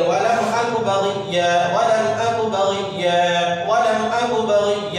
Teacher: आवाज़ नाक में नहीं जाएगी, क्यों नहीं जाएगी? इजहार होगा, इजहार के माने ज़ाहिर करना।